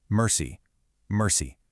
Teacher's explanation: A trochee is the exact opposite, an accented syllable followed by an unaccented one, giving a falling beat